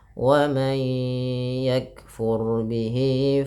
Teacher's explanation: wa may yakfur, nun sukun bertemu ya, idgham bi gunnah, tahan. Bihi mad silah qasirah.